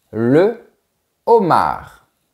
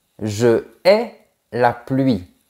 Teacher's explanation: La lettre H se comporte comme une vraie consonne, donc on ne fait pas d'élision ! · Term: H aspiré